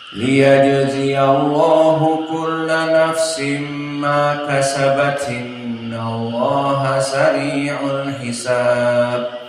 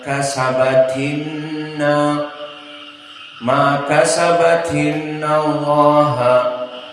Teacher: Kasabat bertemu dengan inna dalam satu nafas, maka dibaca kasabatinna ma kasabatinnallaha, seperti itu. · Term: naql